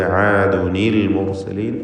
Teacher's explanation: അതുകൊണ്ട് ചേർത്ത് വായിക്കുമ്പോൾ തൻവീനിനെ അഥവാ തൻവീനിൽ ഉച്ചരിക്കുന്ന സാക്കീനത്തായ നൂനിൻ്റെ സുക്കൂനിനെ കസ്റാക്കി മാറ്റി ആദുനിൽ മുർസലീൻ എന്ന് പറയണം. ആദുൻ എന്ന ആ സുക്കൂനിൻ്റെ ശബ്ദത്തെ കസ്റാക്കുക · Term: തഹ്രീക്ക്